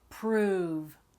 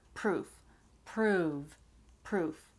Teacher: The vowel sound, right? Prove, that's longer. You're saying it for a longer length of time. And then proof is a lot faster.